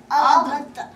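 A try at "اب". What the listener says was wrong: Freeze the sound. Look. Ab. Don't say ado. Just say ab.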